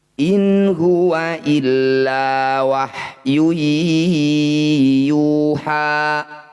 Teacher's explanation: Yu dan Ha ini panjangnya sama tidak boleh panjang sebelah